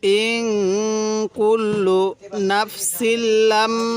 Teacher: ইং, এটা গুণনা করব, কারণ নুন সাকিনের পরে কাফটি হলো ইকফার হরফ।